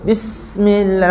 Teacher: Sebab itu masa kita sebut bis, kita bukan sekadar bismillah. Bis tu lamakan sedikit dan angin dia hidup. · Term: hamas